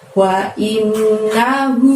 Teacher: Innya tahan 2 harokat, hu-nya panjangnya 2 harokat